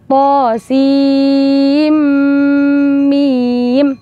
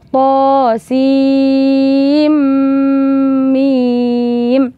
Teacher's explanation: Kemudian ada mim, nun sukun bertemu mim itu bacaan idgham. Sehingga setelah kita selesai menuntaskan makhrajnya sin, itu tidak langsung ke huruf mim, tetapi harus didengungkan terlebih dahulu. Sehingga cara membaca yang benar adalah To Sim Mim.